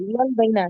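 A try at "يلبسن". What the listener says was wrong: यलबसना होगा, सीन होगा वो। नहीं नून वो प्लूरल वाला है लास्ट में। यलबसना।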